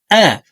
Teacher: হলকের শুরু থেকে হামজা হরফের উচ্চারণ হবে শক্ত করে পড়তে হবে